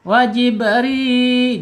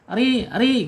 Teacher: Karena dia ri ya tetap inhirabnya tipis tipis ya. Bergetarnya tidak boleh melebihi dari dua ro itu ya. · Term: tarqik tipis